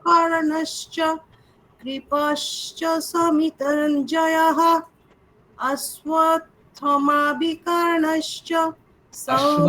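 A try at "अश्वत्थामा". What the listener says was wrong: অশ্বত্থামা, ওখানে থা দীর্ঘ, মা দীর্ঘ। থাটাকে টানলেন কিন্তু মাটাকে টানলেন না। থা মা দুটোই টানতে হবে।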